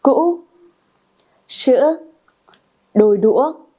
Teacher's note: this is a high tone. The pronunciation goes up a little bit, then go down, and then goes up.